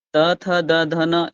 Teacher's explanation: त, थ, द, ध, न, इनमें देखिए दांत बहुत ही ज्यादा प्रयोग हो रहा है, त, थ, द, ध, न, यानी दांतों के बीच में जीभ आ रहा है बार बार, इसलिए इनको दंत व्यंजन कहते हैं।